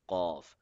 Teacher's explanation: Cough will be read from the back side of the roof of the mouth.